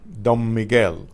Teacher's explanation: that N in Don and the M in Miguel are going to sound like one M.